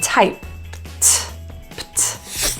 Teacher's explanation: the ED is actually pronounced as a T sound, a released t, when the sound before that ED is voiceless, so a quiet sound